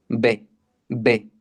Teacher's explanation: Labial, pues es de los labios. Utilizas ambos labios. Dices B, B. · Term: bilabial